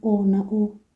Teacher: irabu viringwa utamko wa midomo ikiwa imeviringwa